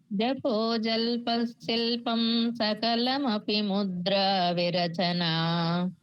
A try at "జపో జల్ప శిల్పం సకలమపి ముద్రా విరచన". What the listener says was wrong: 2 సార్లు చెప్పారు, కరెక్ట్గా వచ్చింది.